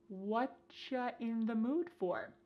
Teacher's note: Here the word you has been reduced to cha.